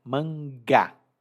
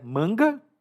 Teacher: e aqui observe a pronúncia mangá não é manga mas mangá o Gá é a silaba acentuada